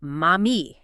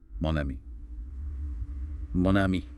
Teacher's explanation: the n sound at the end of mo, which is usually silent, links up with the vowel sound of ami. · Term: liaison